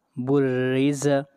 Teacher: با را پیش بر، را زیر ری، بری، زا زبر زا، بریز۔ را کو باریک پڑھیں گے اس لیے کہ را کے نیچے زیر ہے